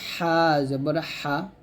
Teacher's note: আইনটা হলকের মাঝখান থেকে এবং হা টাও হলকের মাঝখান থেকে উচ্চারণ করতে হবে